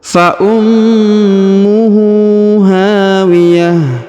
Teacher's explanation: huruf ta marbutoh yang di ujung berubah menjadi ha sukun